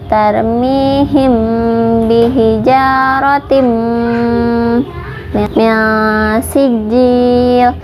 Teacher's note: Bihijaratim, bihijaratim, tim ini hukumnya idgham bigunnah